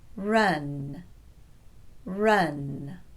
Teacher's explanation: for run, the tongue is again low in the mouth, but the jaw stays pretty neutral. It doesn't drop much at all.